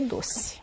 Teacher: a maioria dos brasileiros acaba mesmo falando E como se fosse I